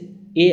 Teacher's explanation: यहाँ कंठ और तालु का उपयोग हो रहा है